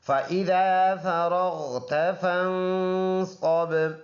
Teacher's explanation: فن ناک میں آواز لے کے جائیں گے